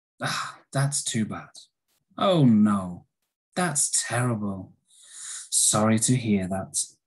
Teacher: you can see how a falling intonation can really show, sorry to hear that. It shows you feel sad